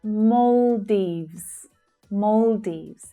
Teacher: The /ɔː/ as in 'door' vowel sound is the stressed sound.